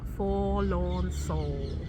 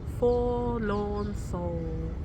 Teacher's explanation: your lips are forming an O shape the whole time the same shape they'd form if they were about to blow a candle out